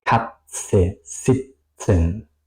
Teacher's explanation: se pronuncia más o menos como una T y una S, ¿ok? Es decir que aquí es Katze, sitzen, con una S muy larga